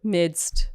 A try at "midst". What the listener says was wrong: You say mist. That's easy. Mist, but it's not mist. It's midst. It's midst.